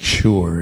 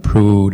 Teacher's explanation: straightforward also and then u is pronounced as in prudent so there's not a y before it it's just an oo sound